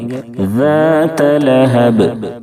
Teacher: ذال کی ادائیگی میں زا کی طرح سیٹی جیسی آواز نہیں نکلنی چاہیے، ذات اس طرح سے نہیں پڑھیں گے۔